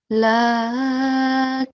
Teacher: I'm only prolonging the noon for 1 second because it only has a short stroke of fatha